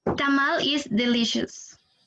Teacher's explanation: it sounds still a little bit flat, but you somehow put more emphasis on tamal